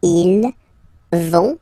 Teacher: ils vont, final T, not pronounced. Ils vont, and then feminine form, elles vont.